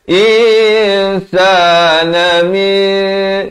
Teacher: Ikhfa hakiki di sini disamarkan 2 harakat.